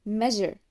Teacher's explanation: we have the sound j, as in measure. This sound is voiced, which means the vocal cords vibrate in producing it.